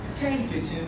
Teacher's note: the stress is on the second syllable. So you can't stress the first. You can't make the pe sound aspirated.